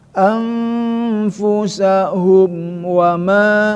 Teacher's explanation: mim bertemu sama wau, ya itu izhar syafawi tidak boleh didengungkan